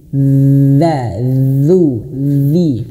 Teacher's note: Kemudian huruf zal. Huruf zal saya sudah ingatkan lidahnya itu dikeluarkan sedikit ya. dan sentuhkan di ujung langit-langit atau sederhananya nanti digigit sedikit dza duzu dzi gitu ya.